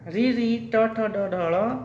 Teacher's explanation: ये सब कहाँ से निकलते हैं? मूर्धा से निकलते हैं। मूर्धा के वर्ण है।